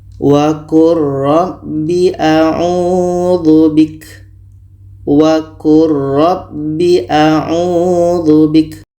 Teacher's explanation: Lam mati bertemu roh, ini idgham mutaqaribain. Jadi bunyi lam ini kita masukkan ke roh secara sempurna. Bunyi lam tidak terdengar lagi.